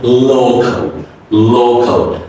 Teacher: Two L's are coming the beginning and the end of the word. So the first L is a light L and the ending L is a dark L.